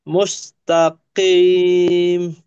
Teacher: কিম না মোটা আওয়াজে মুস্তাকিম